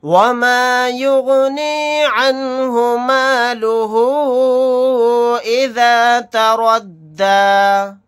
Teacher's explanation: یہاں پر الٹا پیش کے بعد حمزہ دوسرے کلمے میں آ گیا الف کی شکل میں، تو یہاں پر مد منفصل کا قاعدہ ہوگا۔ اس مد کو ہم 3 الف کی مقدار کھینچ کر پڑھیں گے